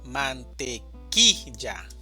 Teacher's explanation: La división silábica es de 4 sílabas, mantequilla, y la mayor fuerza de voz está en la sílaba ki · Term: sílaba tónica